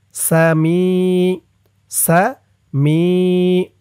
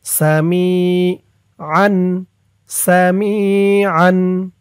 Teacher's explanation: মি এক আলিফ টান, জেরের পরে ইয়া সাকিন।